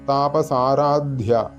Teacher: ധ എന്നുള്ളത് തൊണ്ട ചേർത്തുകൊണ്ട് ഉച്ചരിക്കേണ്ട ധയാണ് മഹാപ്രാണനാണ് അപ്പോ അതുകൊണ്ട് അത് അങ്ങനെ തന്നെ ഉച്ചരിക്കണം താപസാരാധ്യ എന്ന് ചൊല്ലിയതുകൊണ്ടായില്ല അതുപോലെതന്നെ [സംഗീതം]